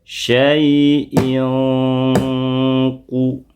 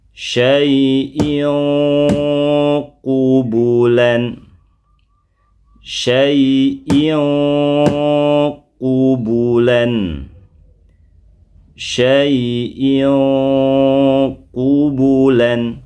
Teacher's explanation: Gimana perubahannya? Samar, suaranya menjadi terdengar samar, dengung, dan ditahan lama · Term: tanwin in